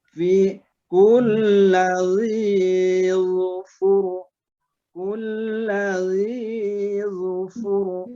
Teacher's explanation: roh sukun yang disukunkan oleh dhammah atau fathah, rohnya tetap tebal